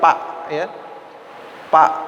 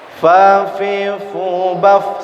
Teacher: Jadi setiap huruf fa harus dikeluarkan udara. Jadi jangan sampai pa.